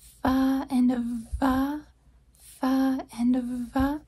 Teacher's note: We have the F sound and the V sound, fa and va, fa and va. You notice that contact is almost being made between the top teeth and the bottom lip. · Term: labiodental